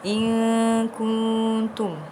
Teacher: In kuntum perlu dibaca dengan dengung kerana nun sakinah bertemu dengan kaf, hukum dia adalah ikhfa hakiki.